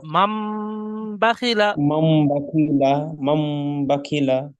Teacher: নুন সাকিনের পরে বা এসছে, তাই নুন সাকিনকে মিমের দ্বারা পরিবর্তন করে একালি পরিমাণ গুণনা করে পড়তে হয়, একে ইকলাব বলে।